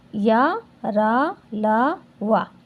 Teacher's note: इन व्यंजनों का उच्चारण करते समय मुख से किसी भाग का स्पर्श नहीं होता है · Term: अंतस्थ व्यंजन